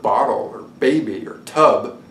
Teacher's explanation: every time you made a b sound, like in the word bottle, or baby, or tub, then your brain would tag that sound. And in this case, it would tag it as voiced, and bilabial, and as a stop.